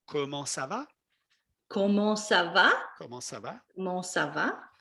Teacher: in french the voice goes up when you ask a question